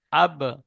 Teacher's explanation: হরফে কলকলা পাঁচটি অক্ষরের মধ্যে একটি অক্ষর বা তাই বা কে কলকলা করে আগের অক্ষরের সাথে মিলিয়ে পড়বো